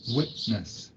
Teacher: The voiceless alveolar plosive sound t is often replaced with a voiceless glottal plosive in connected speech. This most frequently occurs when t appears at the end of a syllable and the following sound is a consonant. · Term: Glottal stop